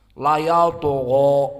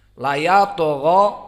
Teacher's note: Layatogho, maka to di sini mufakhamah dan dia sakinah.